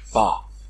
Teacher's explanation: Pâteur, c'est-à-dire le S implosif, c'est-à-dire qui termine la syllabe. Le S implosif est tombé. Il ferme la voyelle en l'allongeant.